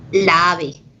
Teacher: la palabra ave tiene la fuerza de voz en la primera a